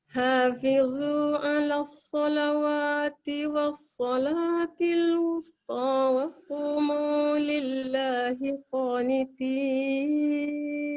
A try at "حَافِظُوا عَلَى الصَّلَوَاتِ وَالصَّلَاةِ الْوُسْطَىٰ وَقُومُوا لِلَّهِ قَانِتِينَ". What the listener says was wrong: boleh tak betulkan sikit dekat sin? Sebab kita nampak to kan. Lepas tu sebelum sin tu waw balik depan, dia jadi wus. Kita senyum sikit dekat sin.